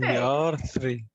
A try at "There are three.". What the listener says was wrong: Yeah, so the tongue needs to come through in between the teeth and the R is soft. So not R, ah.